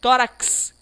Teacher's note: uma única letra exercendo dois fonemas dois sons se produz o som de k e o som de s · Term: fonema de KS